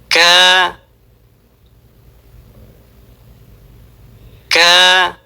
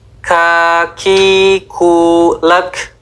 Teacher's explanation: Huruf kaf diucapkan dengan mengangkat pangkal lidah di depan posisi qof. Nah, di sini ada versi ilustrasi yang di mana lidah paling dalam itu mengarah ke mulut dan apa yang berlawanan dengan atap mulut.